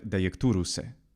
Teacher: And that's because anytime he has a final consonant, like Italians kind of have to do unless they're well trained in phonology, they geminate the final consonant and they add a schwa vowel or something closer to an e sound